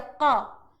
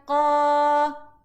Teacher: Okay, ni huruf qaf. Qaf itu bunyi dengan satu harakat sahaja.